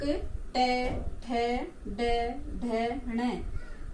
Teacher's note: ये ध्वनि हमारे तालु से थोड़े ऊपर वाले भाग से जिसे मूर्धा कहते हैं उससे निकलती है तो इसका उच्चारण स्थान हो गया मूर्धा। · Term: ट वर्ग